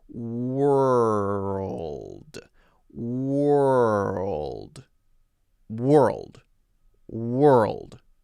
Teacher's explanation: there's a L in front of the D, Earl, and you have to roll from the R to the L to the D